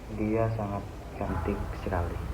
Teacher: terdapat tekanan pada bagian kalimat cantik sekali. Nah, maka itu bisa mengubah makna atau menegaskan bagian penting dalam kalimat tersebut.